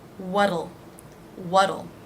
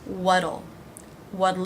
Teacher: the contraction adds a second unaccented syllable